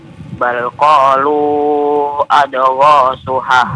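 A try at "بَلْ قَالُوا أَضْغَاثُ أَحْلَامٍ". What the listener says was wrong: Kalau bukan jangan di qalqalahkan ya.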